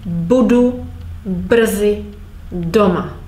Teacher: I'm stressing the first syllable